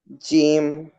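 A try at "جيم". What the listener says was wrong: জিম বলা যাবে না, জিম হচ্ছে 3 আলিফ টেনে পড়তে হবে শক্তভাবে। জিম।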